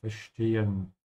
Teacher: with the S before a T, pronounce it like sh